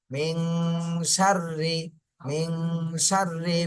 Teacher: নুন সাকিনের পরে ইগফার হরফ সিন এসেছে এজন্য এই নুন সাকিনে ইগফা গুন্না করতে হবে